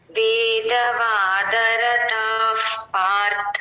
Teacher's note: F sound అక్కడ విసర్గం పైన ఎఫ్ అని రాసేసుకోండి